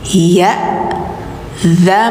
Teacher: Nah ini jangan zan tapi zam, langsung ke suara m. Karena setelahnya ada huruf iklab ba ya, maka gantikan suara n ke m.